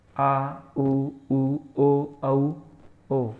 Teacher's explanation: जिन स्वरों के उच्चारण में जीभ का पिछला भाग सक्रिय रहता है वो कहलाते हैं पश्च स्वर। ये हैं आ, उ, ओ, औ, ओ, ये आगा स्वर है।